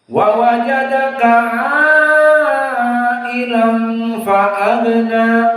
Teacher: Maka ailannya di sini panjang 4 sampai 5 sesuai qiraah Hafs dan jumhur.